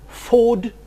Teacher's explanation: The mid-high back vowel O, as in food